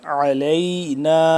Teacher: لفظ عین کو حلق کے درمیانی حصے سے اور تھوڑا سا کھچاؤ پیدا کر کے عین کھینچ کے پڑھیں گے